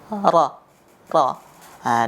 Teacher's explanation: Dan pengucapannya sebisa mungkin tidak lebih dari 3 getaran. Huruf ra tidak lebih dari 3 getaran